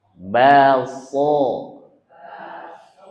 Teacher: Kalau kita bilang baso itu sudah sh tapi belum fasih, belum tebal.